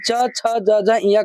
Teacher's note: छ का उच्चारण स्थान तालु होता है।